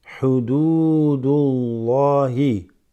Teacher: This waw extends the dal slightly.